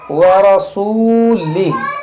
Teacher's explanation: यहाँ देखें रा पर ज़बर है, इसको मोटा पढ़ेंगे, ये वाव मद्दा है, इसको खींचेंगे, व रसूलिही।